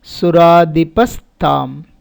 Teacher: Visarga is followed by ta, so visarga becomes sa.